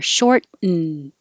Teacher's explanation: So you don't say the T in the middle.